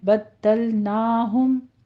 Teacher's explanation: दाल के ऊपर तशदीद अदा करते हुए आगे लाम को स्टॉप कर देंगे